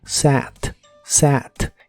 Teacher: la a de esta palabra se pronuncia como si fuese el sonido e y el sonido a juntos